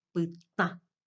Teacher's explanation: Porque la vocal nasal A ya nasaliza. Y es más, toda la palabra ya es una palabra nasal. · Esa ya es una sílaba nasal, aunque conforme sílaba con una consonante oral que es T. Igual nomás ya se convierte en una sílaba nasal.